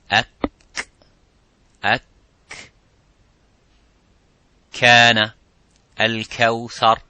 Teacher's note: the kaf touches the roof of the mouth, a little bit touches the bone of the roof of the mouth